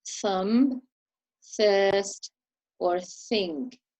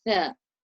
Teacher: So for the letter Tha, the tongue is placed between the teeth, touching the upper teeth, but you have to leave a small opening so that you can force the air through